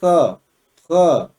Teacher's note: गले से। यानी क बोला जाता कंठ से है, लेकिन कंठ से बोलने के साथ साथ उसकी जो घर्षण भी है वो भी होता है। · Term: आगत व्यंजन